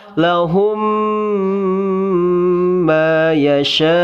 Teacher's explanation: Nah, kedepannya ada huruf mim lagi. Mim sukun bertemu dengan huruf mim, maka wajib ditahan dan didengungkan. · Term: idgham mimi